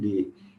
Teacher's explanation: O D é a língua, bate nos dentes e trava o ar.